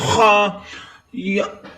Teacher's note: خا ساکن ہے، یا کو خا کے ساتھ ملائیں گے اور خا حروف مستعلیہ میں سے ہے، موٹا پڑھیں گے اور خا کی آواز حلق سے نکالیں گے